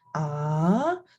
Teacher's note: the second tone is a rising tone when you say it you say in a question tone